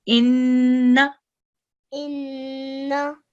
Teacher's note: we have shadda on top of noon, so we need to make sure that we make the sound for 2 noons